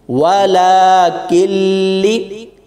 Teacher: واو زبر وا، لام کھڑی زبر لا، کاف لام زیر کل، لام زیر لی، ولا کلی، نون ساکن ہے اس کو چھوڑ دینا ہے، کاف کو لام کے ساتھ ملا کر پڑھیں گے